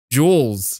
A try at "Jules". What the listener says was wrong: You're saying more of an O. Like you're like Jules.